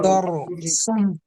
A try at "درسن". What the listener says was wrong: پتہ ہے نا را کو موٹا پڑھیں گے ہاں دار سن دار سن